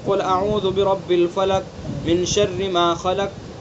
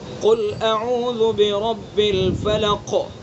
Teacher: قل کا جو قاف ہے نا، یہ چونکہ متحرک ہے، اس کے اندر بھی قلقلہ ہوگا لیکن کم درجے کا ہوگا، 4تھے درجے کا قلقلہ ہوگا۔